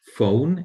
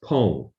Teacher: the English F sound is substituted, replaced by the Burmese pa. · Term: substitution